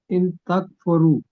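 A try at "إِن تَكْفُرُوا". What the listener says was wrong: ان تکفروا، لمبا کر دیں ذرا.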